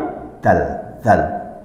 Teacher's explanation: zal itu keluar dari ujung lidah, bersentuhan dengan gigi atas. Jadi gini, yang keluar itu sedikit, bukan zal tapi zal.